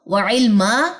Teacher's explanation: 2 زبر کا وقف ہے، ایک زبر ڈراپ ہوگی، ایک زبر الف کے ساتھ مل کے الف مد کا قاعدہ بنائے گی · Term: وقف بالابدال